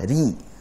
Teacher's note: dan bacalah dengan tarqiq atau tipis huruf ra saat dia bertanda kasrah